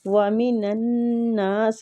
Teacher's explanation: نون مشدد پہ غنہ کریں گے نون ساکنہ کے بعد یار ادغام مال غنہ ہو رہا ہے